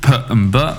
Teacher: You're starting at the front of your mouth with P and B, which is with your lips